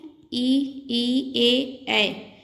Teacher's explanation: ये जीभ के अग्रभाग से बोले जाते हैं, इसलिए इन्हें अग्र स्वर कहते हैं।